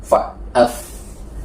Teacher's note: bibir bawah dengan ujung gigi seri atas